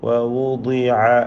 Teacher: പലർക്കും ആ ഐന് ഒരു യാ പോലെ ഉച്ചരിക്കുന്ന അവസ്ഥ ഉണ്ടാവാറുണ്ട്. കാരണം എന്താ വെച്ചാൽ ഐനിന് മുമ്പിൽ കസ്റുള്ളത് കൊണ്ട് വൗദിയ എന്ന് പറയും.